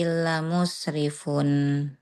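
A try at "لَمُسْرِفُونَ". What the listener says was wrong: Musrifuna. Kalau belum ada tanda buletan di akhir kalimat, berarti huruf terakhirnya baca, Bun.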